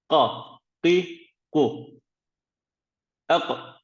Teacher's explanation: Ağzımızın biraz daha arka bölgesindeki damağa değmesi suretiyle Kaf harfimiz çıkmaktadır